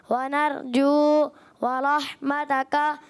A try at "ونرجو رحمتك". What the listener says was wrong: وَنَرْجُو رَحْمَتَكَ، واو نہیں ہے یہاں دیکھیں،